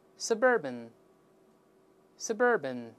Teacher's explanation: suburb 加 an 重音后移，读成 suburban